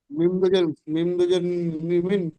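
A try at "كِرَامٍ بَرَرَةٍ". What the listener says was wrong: মিম মিম জের পড়তে হবে, মিম দুজের নয়। তানবিন তো বাদ যাবে।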